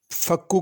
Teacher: فکو کے اندر کاف باریک ہے، اس کو بڑا قاف نہیں پڑھنا، چھوٹا کاف پڑھنا